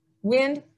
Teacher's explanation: that D on the end of wind is very soft, wind. So we don't say wind, wind.